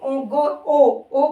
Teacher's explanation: आएगी ओ ओ के साथ ओ हल्की सी नाक में जाएगी ओ की आवाज नाक में चली जाएगी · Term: अनुनासिक